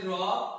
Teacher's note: র হচ্ছে কম্পনজাত ধ্বনি, যে ধ্বনি উচ্চারণের সময় জিহ্বার অগ্রভাগ কম্পিত হয়, অর্থাৎ জিহ্বার অগ্রভাগের কম্পনের এবং উপরের পাটি দাঁতের সংস্পর্শে যে ধ্বনিগুলো উচ্চারিত হয় তাকে কি বলে?